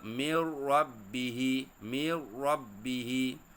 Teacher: secara bacaannya menggabungkan bunyi Nun dengan huruf selepasnya tanpa dengung